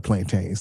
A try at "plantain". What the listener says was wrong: Plantain, not plantains. Plantain. It's plantain.